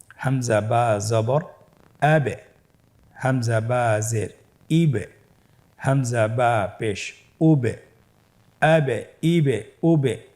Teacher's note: হরফের শেষের দিকে একটা সাউন্ড করছি, এটা একটা প্রতিধ্বনি হচ্ছে, একটা ডাবল সাউন্ড হচ্ছে, এটাই কলকলা। উচ্চারণের সময় একটু ধাক্কা দিয়ে উচ্চারণ করলেই কলকলা হয়ে যাবে ইনশাআল্লাহ।